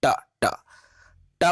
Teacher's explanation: आप जब उच्चारण करोगे तो चीजें क्लियर होती है। ट ट ट बोलेंगे तो ट दांत के बीच में नहीं आ रहा है